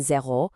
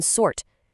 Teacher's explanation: You've got a closed o in zero versus a more open relaxed a in sort.